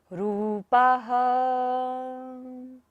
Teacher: र पर बड़े ऊ की मात्रा है, रूपाः। ह पर पा के बाद विसर्ग है, तो सारी सांस का विसर्जन करेंगे।